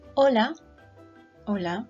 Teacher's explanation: the H in Spanish language is silent so we don't actually read it